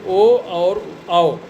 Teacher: ओ दौतोह कंठोष्ठम, यानी ओ और औ इन दोनों वर्णों का उच्चारण कंठ और ओष्ठ से होता है।